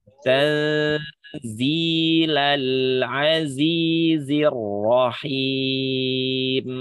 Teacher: menyamarkan bunyi nunnya yang dikatakan di situ ikhfa hakiki, menyamarkan bunyi nun jadi nggak ada bunyi n di situ